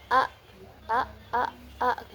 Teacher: Kemudian cara keluarnya itu berupa letupan infijari a a. Kemudian posisi dalam pita suaranya itu tidak bersuara atau mahmus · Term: huruf hamzah